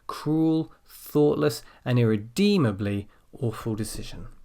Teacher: come down on awful decision and what we usually do is we stress the final adjective quite strongly